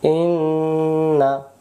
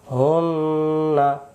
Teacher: যে হারকাত জবর হারকাত, উচ্চারণ তাড়াতাড়ি, শুধু মাঝখানে গিয়ে গুনগুন আদায় করবো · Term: গুন্না